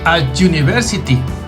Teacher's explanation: empezaría con la vocal u en español, pero la pronunciación no es u, es you. Entonces, como no tiene el sonido vocálico, sería el artículo a.